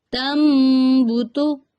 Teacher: تنبتو، نون ساکن کے بعد با، تنبتو تو نون کی آواز کو میم سے بدل دیں گے